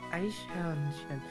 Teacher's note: after a front vowel in German, the ch becomes a sh. Like a palatal sound instead. Because it's a front vowel.